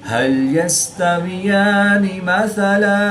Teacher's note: दो ज़बर की तनवीन को वक़फ़ की हालत में अलिफ मद्दा से तब्दील करके पढ़ेंगे।